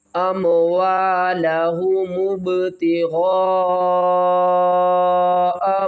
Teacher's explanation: وَمَثَلُ الَّذِينَ يُنْفِقُونَ أَمْوَالَهُمُ ابتغاء با کے اوپر قلقلہ کریں گے، غین الف مد زبر غا 5 الف کی مقدار کھینچ کر پڑھیں گے